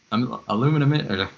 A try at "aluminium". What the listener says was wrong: Aluminium. You guys miss out a letter. There's an I in there that you guys don't pronounce.